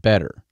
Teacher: And I'm from the Midwest in the United States, and we have, with our Midwestern accent, and Americans do it in general, but I tend to pronounce my T's like D's. Sometimes, not at the beginning of it, but if the consonants come in the middle of the word, I tend to pronounce it different.